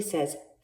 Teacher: So F just really says f. When you make an F sound, feel your throat. Do you feel any vibration? You don't, do you?